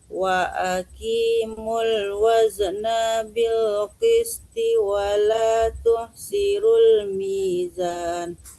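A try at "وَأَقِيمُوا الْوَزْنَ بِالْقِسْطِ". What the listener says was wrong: Wa aqi ibu ya, wa aqi jangan wa aki, wa aqi qaf tebal. Nanya jangan tertahan. Waznabil. Jangan ditahan nanya. Waznabil.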